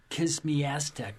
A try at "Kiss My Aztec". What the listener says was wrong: You said Kiss Me Aztec. You went a little cockney there.